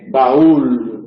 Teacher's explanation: hay un encuentro entre una vocal abierta o baja y una vocal cerrada o alta, pero el acento recae en la alta o cerrada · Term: hiato